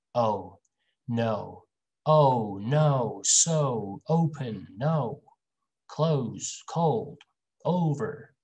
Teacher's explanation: Starts with O, finishes with oo.